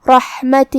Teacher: آخری میں ہا کے نیچے کھڑی زیر ہے تو یہاں مد صلہ صغرا ہوا، ہم اپنی آواز 2 مد کے برابر لمبی کریں گے